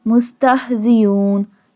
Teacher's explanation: Seen pronounced like a whistle sound and ha this one ha pronounced from the bottom part of the throat.